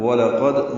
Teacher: قواعد اس طرح ہے: وَلَقَدْ واو لام جلدی سے پڑھیں گے، لام باریک، قاف پر ہے موٹا کریں گے، دال ساکن پہ قلقلہ ہے